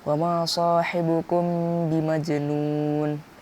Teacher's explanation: bacaan tersebut harus disamar-samar di bibir dan didengungkan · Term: ikhfa syafawi